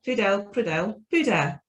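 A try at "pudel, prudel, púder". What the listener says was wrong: But the R letter has to be stronger in Slovak language, like not like puder, but puder. So it's hard to pronounce.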